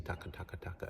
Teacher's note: the tip of your tongue touches the roof of your mouth and then the back of your tongue touches the roof of your mouth